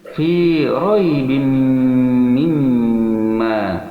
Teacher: memasukkan tanwin kasrah kepada mim yang dibarengi, yang disertai dengan dengungan pada hidung 2 harakat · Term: idgham ma'al gunnah